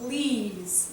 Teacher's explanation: we emphasize this aspiration of the beginning